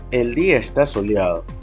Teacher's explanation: Y en este caso, la cadencia se manifiesta al final de la oración con la palabra soleado. La entonación desciende al final, lo que indica que se trata de una afirmación concluyente